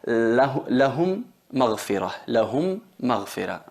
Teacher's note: Ahí son 2 palabras, pero la primera M es con sukun muda y la otra es con vocal fatha. Entonces fusionamos la primera en la segunda y se convierten en una M reduplicada con shadda, y ahí tenemos que hacer la nasalización, que es la gunna, en la duración de 2 tiempos, 2 harakat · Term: fusión labial